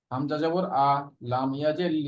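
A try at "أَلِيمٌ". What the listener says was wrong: হ্যাঁ, হামজার উচ্চারণটাকে আরো মজবুত ভাবে, আমরা যেরকম পড়েছিলাম, হামজা হামজা আ আ ই উ, হঠাৎ উচ্চারণ ওইটা যেন ঠিক থাকে।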